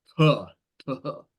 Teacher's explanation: I think originally the phi would be aspirated like puh, puh